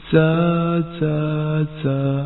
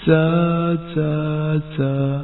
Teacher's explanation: اس میں سیٹی کسی آواز پائی جاتی ہے اور اس کا مخرج یہ ہے، زا کی ادائیگی میں زبان کی نوک کو سامنے کے نیچے والے 2 دانتوں کے کناروں سے مضبوطی سے لگاتے ہوئے، جیسے زا زا زا۔